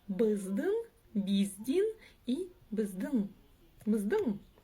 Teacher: в данном случае ударение падает на последний слог. Как вы знаете, если стоит буква или палочка с точкой, как правило, в счёт того, что эта буква эти буквы произносятся очень коротко, как правило, ударение перескакивает на слоёд. · А вот палочка с точкой, которая здесь стоит в двух слогах, нечто среднее по мягкости звучания между буквами ы и и